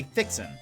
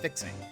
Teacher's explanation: say your words as though there is no g at the end this is common to most southern accents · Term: drop your g's